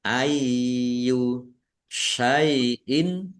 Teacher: kasrah tanwin bertemu dengan huruf alif, bacaan idhar dibaca jelas